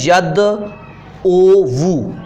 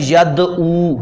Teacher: آخری جو پیش ہے واو کے اوپر وہ ختم کر دیتے ہیں، حرکت ختم کر کے اس کو ساکن کر دیا، اس کو پڑھتے ہیں یدعو، جیسا کہ میں نے اوپر بھی لکھا تھا۔ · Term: اسکان